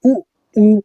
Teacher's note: उऊ बोलते समय हमारे होठ है जो हमारे ओस्ट है वो गोला आकार बना रहे हैं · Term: गोलाकार, वृत्तामुखी